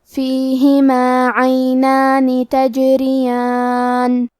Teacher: کلمت تجریان میں حرف الجیم پہ جزم ہے، لہذا ہمیں جیم کو قلقلہ سے پڑھنا ہے، اور قلقلہ کا معنی ہے حرف ساکن کو ہلانا، تو ہم حرف الجیم کو ہلاتے ہوئے یہ کلمہ کو پڑھیں گے تجریان۔ را کے نیچے زیر ہے تو یہاں را کا حکم ہے ترقیق، ہم حرف الرا کو پتلی آواز میں پڑھیں گے · کلمت عینان میں عین کی ادائیگی حلق کے درمیان والے حصے سے ہے، آخری میں نون کے نیچے زیر ہے تو ہمیں زیر کو ظاہر کرنا ہے۔